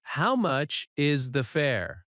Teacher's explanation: Rising tone at fair. Stress fair slightly.